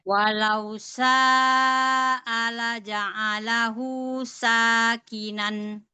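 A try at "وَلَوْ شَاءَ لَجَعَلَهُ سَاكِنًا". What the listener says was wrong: Bagus. Tapi mau shinnya lebih tafasyi. Sya. Walau sya.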